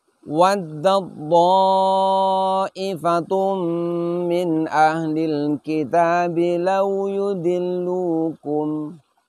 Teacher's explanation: Sedangkan to sifatnya adalah idbaq, yaitu terkatup atau menempelnya lidah di langit-langit mulut. ketika huruf ta ini kita idghamkan ke huruf to, maka semua sifatnya huruf ta hilang. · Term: idgham mutajanisain kubro